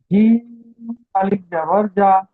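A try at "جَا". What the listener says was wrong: যা টান দেন যা প্রত্যেকটা অক্ষর টান দিয়ে পড়তে হবে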